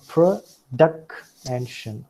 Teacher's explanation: duck stands out and that is why it is accented